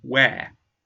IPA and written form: weər (wear)